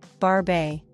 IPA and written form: bɑɹb i (Barbae)